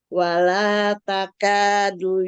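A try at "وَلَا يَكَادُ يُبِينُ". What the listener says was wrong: Itu iya, bukan ta?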